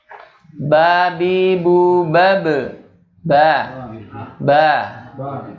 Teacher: Tempatnya yaitu dua, makhrajnya adalah di dua bibir atau syafatain.